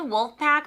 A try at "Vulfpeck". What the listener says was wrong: Wolfpack with a V. Vulfpeck.